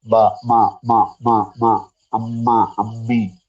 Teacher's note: മൂക്ക് പൊത്തി വെച്ചാൽ നിങ്ങൾക്ക് രണ്ടും ബ ആയിപ്പോകും ബായും മായും വ്യത്യാസം കിട്ടണമെങ്കിൽ മക്ക് മൂക്കും കൂടെ വേണം ബാ ക്ക് നിങ്ങൾ